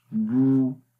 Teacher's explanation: जब पेश आती है तो होंठों को गोल करते हैं